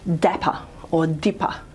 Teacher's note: It might not be quite as aspirated, say, in the middle of a word in an unstressed syllable like dapper or dipper